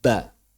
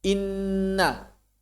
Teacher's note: ba yang pertama adalah sukun, ba yang kedua berharokat. Cuma diucapkannya bersamaan. Enggak ba, enggak, ucapannya bersamaan. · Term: huruf bertasdid